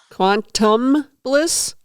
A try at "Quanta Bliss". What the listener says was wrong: like Quanta, not quantum, but Quanta. Like the very smallest particle, bliss.